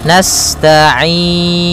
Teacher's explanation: sifat sinnya sempurnakan dengan mengalirkan nafasnya.